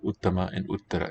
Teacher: Well, the fact, if you remember these as tarap tamap, you will know where the accent must be in a word like uttama and uttara. It's got to be on the first syllable.